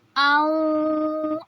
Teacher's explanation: ہونٹوں کو گول کریں گے اور غنہ کریں گے